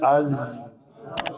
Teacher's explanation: آواز جاری رخوت کی وجہ سے